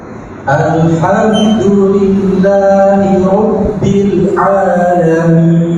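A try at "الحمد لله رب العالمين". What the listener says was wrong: Jangan dijeda antara lam dengan ain. Rabbil namanya mutus. Rabbil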